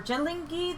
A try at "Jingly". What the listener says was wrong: There's no two L's. It's Jingly. There's no two L's.